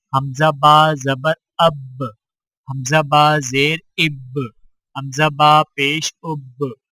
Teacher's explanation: حرف با پر جزم آئے تو دونوں ہونٹ آپس میں مل کر الگ ہو جاتے ہیں اور قلقلہ ہوتا ہے